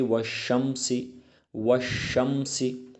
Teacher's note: نہ یہاں پر الف پڑھا جاتا ہے اور نہ لام پڑھا جاتا ہے، بلکہ ڈائریکٹ حروف شمسی پر تشدید ہوتی ہے، حروف شمسی پر تشدید آتی ہے تو یہاں پر ڈائریکٹ والشمس پڑھا جاتا ہے۔